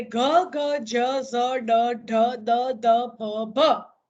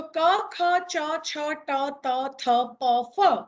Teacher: એટલે હવા જ્યારે નાદતંત્રી વચ્ચેથી પસાર થતી હોય અને જો નાદતંત્રી ધ્રુજે તો ઘોષ ધ્વનિ, અને નાદતંત્રી ધ્રુજે નહીં, કંપે નહીં, તો એ અઘોષ ધ્વનિ. બરાબર. તો ક, ખ, ચ, છ, ટ, ત, થ, પ, ફ આ અઘોષ ધ્વનિ છે.